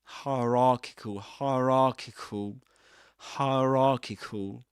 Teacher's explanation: >> Sometimes it happens that in this accent these these trip thongs you know three sounds made up of made out of three vowel sounds like as in fire. The vowel in the middle, the I in the middle gets dropped